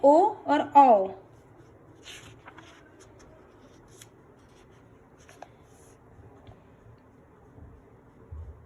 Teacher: जैसे ए अ तो उसके लिए तालु और कंठ दोनों का उपयोग होता है। ओष्ठ और कंठ से बोले जाने वर्ण है ओ और औ।